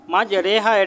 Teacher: এখানে কিন্তু রটা এই এমালা করে পড়তে হবে, একটু একারের মতো করে